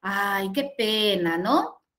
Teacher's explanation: Mi tono de voz, ¿sí? Es suave, ¿sí? Es condescendiente, es un poco apenada